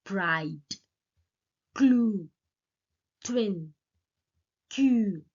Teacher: they are partially or fully voiceless when occur after initial voiceless stops